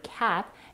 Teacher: is mispronounced for example the vowel a in the word cat is an open front vowel because the jaw has to drop low and the back of the thongue pushes forward